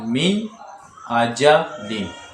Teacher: تو نون ساکن میں گنہ نہیں ہوا بلکہ ظاہر کیا ہے نون کو